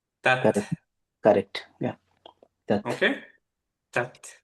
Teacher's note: So sharp stop করলাম, তারপরে বাতাসটা বের করলাম।